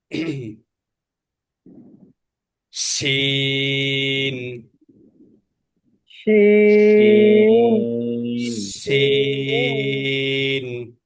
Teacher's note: শিন জিহ্বার মাঝখান, তার বরাবর উপরে তালুর সঙ্গে লাগাইয়া।